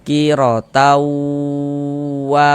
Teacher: Kita masukkan bunyi tanwinnya ke huruf wau yang seharusnya kita baca qirotan, maka kita baca qirotau. Nah, di bagian taunya itu suaranya itu kita tahan, kita panjangkan sejenak ya, sepanjang dua harakat kita gunahkan. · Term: idgham bighunah